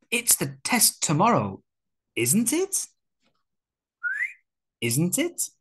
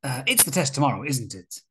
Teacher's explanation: So, one simple pronunciation tip, we use a rising intonation. A rising intonation shows that the question tag is a real question.